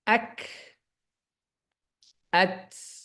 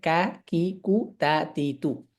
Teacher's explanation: শুধুমাত্র কাফ তায়ের ক্ষেত্রে সুকুন অবস্থায় বাতাস পাওয়া যাবে